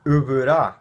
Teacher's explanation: it's not a bee like the bee of Portuguese or English it's like the Spanish B which is a fricative that means you don't make a stop in the air flow